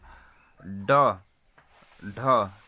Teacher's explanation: जिसके उच्चारण में जीभ ऊपर तो जाता है और तालु को स्पर्श कर वह झटके से आगे आता है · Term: उच्छिप्त व्यंजन